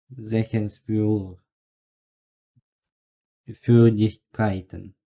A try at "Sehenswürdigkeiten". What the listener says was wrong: Так, неправильно прочитал первую часть слова.